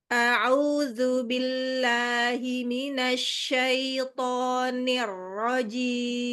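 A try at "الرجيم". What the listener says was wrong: Ar-rajim. Terlalu panjang.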